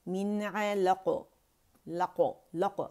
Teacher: ساکن کرتے ہیں تو ہاف زبر آواز اوپر جاتی ہے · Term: قلقلہ